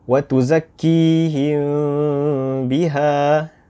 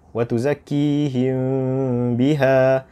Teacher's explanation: Dengung tu tetap ada. Akan tetapi ia tidak masuk terus ke bibir kita. Kita tidak tutup bibir kita apabila kita memasuki huruf ba. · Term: ikhfa syafawi